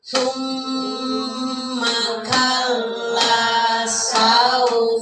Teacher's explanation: mim ditasdid atau nun di tasahdid itu lama ya didengungkannya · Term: gunah